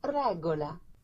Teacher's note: in Spanish and Italian it is the tip of the tongue vibrating on the gum just behind the upper teeth